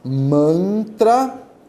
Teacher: Esse A com N aqui tem um som nasal